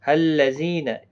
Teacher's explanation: زی یا مدہ ہے، 1 الف کی مقدار کے برابر کھینچ کر پڑھیں گے